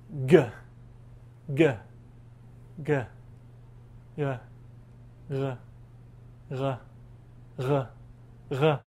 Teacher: try to scrape the base of our tongue against that uvular region. The idea for this technique is to start with a hard G or Gimel sound and then slowly back off the pressure and make it a little bit more of a fricative, more of a scrapey sound that you hear with Resh.